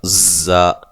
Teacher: زا کو زور سے اور سیٹی کے ساتھ ادا کرنا ہے، زور کی زا کی طرح سختی کے ساتھ، زا، ٹھیک ہے۔